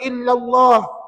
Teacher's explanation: Alif lam jalalah tebal, tebal ataupun tafkhim.